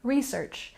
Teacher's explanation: in American English, most often we put the stress on the first syllable, research, and we can use this word as a verb and as a noun.